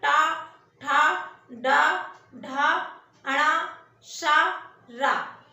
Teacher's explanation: जीभ क्या हो रही है, फोल्ड होके पीछे जाती है। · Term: मूर्धन्य ध्वनियां